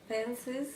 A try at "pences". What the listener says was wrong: Pences. No. No vibration, vibration.